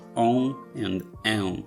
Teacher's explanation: They sound like a regular o or e, followed by a nasal grunt, like so on and en. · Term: nasal vowels